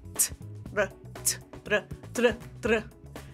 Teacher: what I want you to do is hit it with a T and then tap it as an R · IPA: /tɾ/